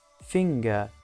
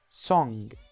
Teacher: /ŋ/ is voiced velar nasal.